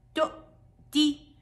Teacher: الهمزه ساكنه زمانها زمن التثبيت فقط